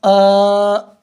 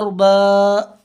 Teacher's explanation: الف سے پہلے زبر ہو تو الف مدہ ہوگا۔ الف مدہ کو ایک الف کے برابر کھینچ کر پڑھیں